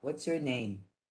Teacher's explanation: Whether it's a statement or a question, your intonation will go down.